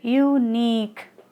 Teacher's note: their stress falls on the second syllable that is nick